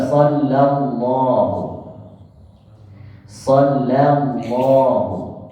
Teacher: tipiskan lam baru tebalkan lafaz